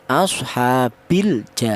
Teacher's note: cara bacanya lam mati ini dibaca idhar atau kelihatan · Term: idhar qamariyah